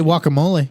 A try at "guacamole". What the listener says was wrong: You're better than that. guacamole. W in it.